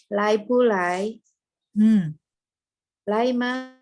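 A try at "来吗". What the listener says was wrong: Spelling pronunciation-nya juga sudah bagus ya.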